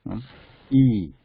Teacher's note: Throat is little bit tense compared to and E, the tongue is moving upwards and forward, and lips stretched. E, and try to stretch it as far as you can. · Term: E sound